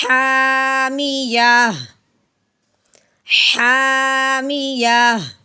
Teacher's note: وقف کی صورت میں گول تا ہو تو تا کو ایک دفعہ ہٹا دیتے ہیں، پیچھے ہاں کی آواز نکالتے ہیں